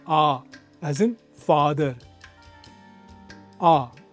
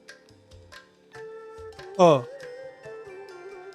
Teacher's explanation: The long one, the longer a, is wide open. Mouth relaxed, spacious, like the middle of the word father. Bright and unmistakable.